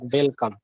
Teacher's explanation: will see the example of welcome okay w-e-l c-o-m-e this uh hindi speakers especially they make an amalgamation of both the v sound and the w sound